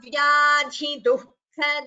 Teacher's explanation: dhi and kha both are Mahaprana in the second line and both should be heard clearly